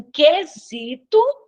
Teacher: em quesito eu não escuto o u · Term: dígrafo consonantal